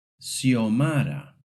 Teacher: In rare cases, the X sounds like an S, especially in certain names.